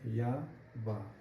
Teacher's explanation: य और व बोलकर देखेंगे तो बहुत ही कम हमारे मुखांग जो है स्पर्श करते हैं एक दूसरे को। इसलिए इन्हें हम अर्ध स्वर कहते हैं।